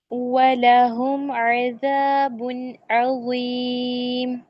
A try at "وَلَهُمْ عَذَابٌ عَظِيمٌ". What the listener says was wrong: وَلَهُم، میم نہیں ہلائیں.